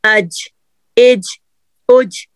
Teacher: ऊपर वाले जो तालू है ना उसके साथ जुबान का दरमियानी हिस्सा खड़ा होगा